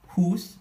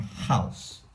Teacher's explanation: the U sound became an ow sound later on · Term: Great Vowel Shift